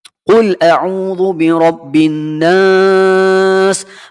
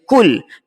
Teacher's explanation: dibaca dengan huruf Qaf, sedikit pekat sebutan huruf Qaf itu kerana makhrajnya berada pada pangkal lidah kita. Kita tak boleh baca kul.